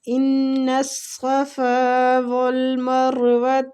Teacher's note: صاد بھی رخاوے کے ساتھ پڑھیں گے اور مستعلیہ پور کرنا ہے